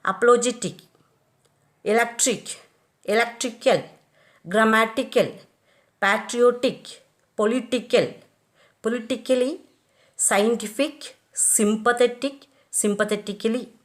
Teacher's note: words ending in IC, ICAL, ICALLY have the primary accent on the syllable preceding the suffix.